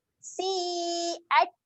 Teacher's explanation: Keluarkan sedikit angin Ta ketika mati dia ada sifat keluar angin.